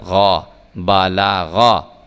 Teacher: یہ دیکھا کہ ہم نے جب غین کو پڑھا ہے تو ہم نے غین کو پر کر کے موٹا کر کے پڑھا ہے